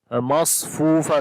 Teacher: swad also we read in heavy sound